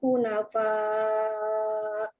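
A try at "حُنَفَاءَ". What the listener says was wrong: Hunafa, jangan fa, tipiskan.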